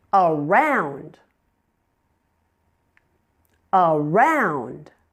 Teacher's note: Now the second syllable is the primary stress syllable. Round is louder and longer with a clearly understandable vowel sound.